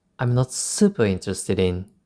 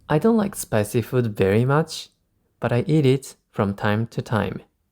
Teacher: I emphasized very because I do like spicy food